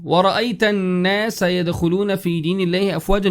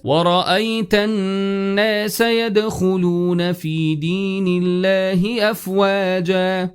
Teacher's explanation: the letter alif is present and there's a fatha before it, and we make it long for 2 counts